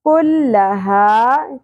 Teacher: कुल्लहा काफ बारीक होगा और हा अक्सा हलक से।